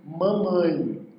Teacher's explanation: Pela presença do M, nós também nasalizamos este A.